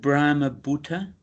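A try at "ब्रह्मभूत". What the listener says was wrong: No, it's more Bhuta. Brahma Bhuta. So that's why it's got a line above the U. So it's a long U. Bhuta. Brahma Bhuta. It's not Bhuta. It's Bhuta. Yeah, Brahma Bhuta.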